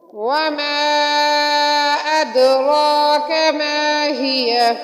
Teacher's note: وَمَا أَدْرَاكَ مَا هِیَ، دال حروف قلقلہ میں سے، دال ساکن ہے حروف قلقلہ میں سے ہے، را پر پڑھیں گے ادراک میں، تو ادرا میں دال کو ہلا کر پڑھیں گے، ماہیہ میں ہا کو سینے کی طرف سے ادا ہوگی